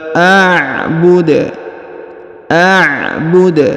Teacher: huruf Dal yang di ujung atau huruf da dipantulkan atau diqalqolahkan